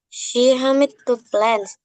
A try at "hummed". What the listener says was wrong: Hum. You don't pronounce the ed. Okay, hum.